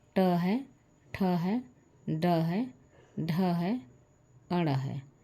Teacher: वह मुर्धा से बोला जाता है इसीलिए इसका नाम जो है हम मुर्धन्य रख दिए हैं · जब जिह्वा टच करती है, सटता है मूर्धा वाले स्थान पे, जो मेढ़ी की तरह बना हुआ है हमारे मुंह के दांत के नीचे, वही स्थान मूर्धा है।